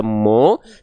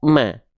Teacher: mim termasuk ke dalam huruf yang tipis karena dia tidak dibaca dengan vokal O tidak dibaca mo tapi dibaca ma ya karena vokal a berarti